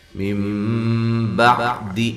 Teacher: موٹا کرنا ہے، من بعد یہ نون ساکن کا اقلاب ہے، نون ساکن کی تنوین کے بعد با آ جائے تو وہاں اقلاب مع الغنہ ہوتا ہے ، اقلاب کرنا ہے غننے کے ساتھ، با عین کو واضح